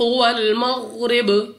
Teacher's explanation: غین مستعلیہ میں سے ہے، اس کو موٹا پڑھیں گے، را کے نیچے زیر، تو را کو باریک پڑھیں گے۔ اور با ہمارے پاس جب ہم اس کو ساکن کریں گے تو ہمارے پاس با ساکن ہو جائے گا، تو قلقلہ کر کے ادا کریں گے، یعنی قلقلہ کرتے وقت ہماری آواز ہمیں واپس سنائی دے گی۔